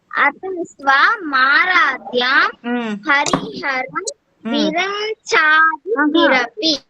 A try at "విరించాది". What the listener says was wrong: విరం కాదు, విరం కాదు, రిం రిం రిం.